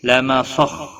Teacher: لما صخ خا ساکن کو ہلانا نہیں، خا حروف مستعلیہ میں سے ہے، پر پڑا جائے گا